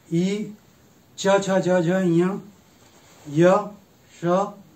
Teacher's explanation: इनका उच्चारण स्थान तालु है। ई, च, छ, ज, झ, ञ, य, श का उच्चारण स्थान तालु है।